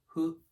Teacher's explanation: Hu is not an H sound or an F sound. It's kind of both. You make it by, try saying the word hu without rounding your lips.